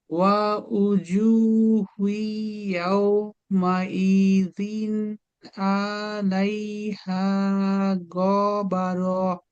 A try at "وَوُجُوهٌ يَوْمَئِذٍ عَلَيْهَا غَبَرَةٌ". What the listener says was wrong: আলাইতে টান হয়েছে আতে গতে টান হয়ে গেছে আবার ওয়া উজুহু ইয়াউমাইদিন আলাইহা গবারহ